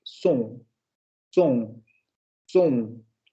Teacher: Semiabierta, posterior, labializada, nasal.